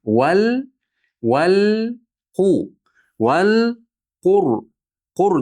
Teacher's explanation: Val deganimizda mana vav usti fathalik lamga bog'lab o'qiymiz. Hamza vasli o'qilmay qoladi. Val qu val qur deb turib qudi dommasini aniq bildiramiz, ro'ni yo'g'on qilamiz.